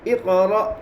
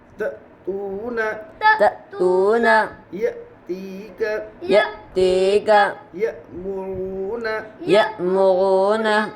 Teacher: والے حرف کو پیچھے والے حرف سے ملا کر پڑھتے ہیں حمزہ ساکینہ کے پڑھنے میں جھٹکا ہوتا ہے اقرأ حمزہ کے نیچے زیر کو جلدی پڑھے تھوڑا بھی نہ